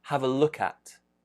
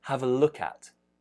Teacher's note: if we have the preposition at, which we usually do, we're going to connect that. It's going to link.